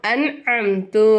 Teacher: இங்க நம்ம குன்னா செய்யக்கூடாது இந்த நூனே சாக்கினை நம்ம வந்து வெளிப்படுத்தி உச்சரிக்கணும் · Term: இல்ஹார்